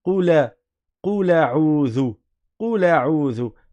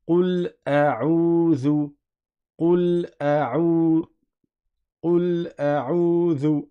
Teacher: Là, ça existe de réciter Qula, Qula a'udhu, Qula a'udhu, mais ça n'est pas dans la lecture de Hafs. Dans la lecture de Hafs, il est indispensable de prononcer la Hamza, et donc on dit Qul a'udhu, Qul a'udhu, Qul a'udhu, à vous.